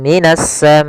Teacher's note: maal gunah naqis ya Kemudian pada lafal minasamaai di sini ada alif lam syamsiah yaitu alif lam yang ditulis tapi tidak dibaca langsung ke huruf Sin